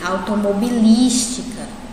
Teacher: É o li, né? Eu passo mais tempo no li. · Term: sílaba mais forte